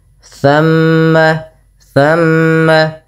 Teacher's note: bacaan ghunah yang di mana suara mimnya ditahan dulu. Jangan hanya ee buru-buru gitu ya.